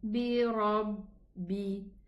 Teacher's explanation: Here we have shadda ba. So we are going to pronounce 2 ba, ba sukun and a ba kasra. Bi rabbi, bi, ba kasra, bi.